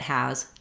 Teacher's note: what makes that Z sound happen is that my vowel is a little bit longer, and then I'm very light on the Z. So if I said he has a, if you can hear the noise of this and I'm holding it, making a strong S sound, it's going to sound incorrect.